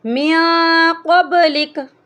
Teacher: کر پڑھیں گے، انزل من قبلک، من پہ بھی ہم نے اخفا کیا ہے، کیونکہ قاف جو ہے حروف اخفا میں سے ہیں، تو ہم یہاں پہ ناک میں آواز کو چھپا کر پڑھیں گے